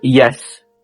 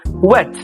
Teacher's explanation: the articulators get close together but not tight enough to spark any friction. So air glides through smoothly without a hint of turbulence. · They often mimic vowels in their glide, like the y in the sound in the word yes, or the w in the word wet. Feel how your tongue bunches up palatally for the y or lips round for the w, all with effortless flow. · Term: approximants, median approximants